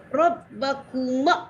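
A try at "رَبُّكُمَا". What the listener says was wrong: bukan Rabbakuma tapi Rabbukuma. Bu doma.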